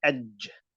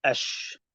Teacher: So with ja, as you can see, the air gap is a lot smaller, and as a result, it comes out a lot stronger, like edge. With the sha, you need the air to be out, and that's what's called hams. When the air comes out, then the execution is correct.